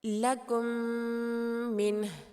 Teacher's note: इदगाम शफ़वी तब होता है जब मीम साकिन के बाद अगर मीम मुतहर्रिक आ जाए, तो मीम साकिन को मीम मुतहर्रिक के साथ मिलाकर इस तरह अदा करेंगे कि दोनों एक साथ मुशद्दद अदा हों, और इस सूरत में हरकतैन मिक़दार गुन्ना भी करेंगे। मिसाल के तौर पे लकुम मिन, यहाँ पर मीम साकिन है और उसके बाद मीम मुतहर्रिक है, तो यहाँ पर हमने दोनों को एक साथ मुशद्दद अदा किया और हरकतैन मिक़दार गुन्ना भी किया।